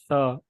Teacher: तो सा का मखरज जो है वो मैंने बताया है कि जब जुबान जो है वो दोनों दांतों के दरमियान में आती है और जुबान ऊपर वाले, खास तौर पे जुबान का किनारा जो है वो ऊपर वाले दांत से जुड़ा रहता है, और तब सा अदा होता है।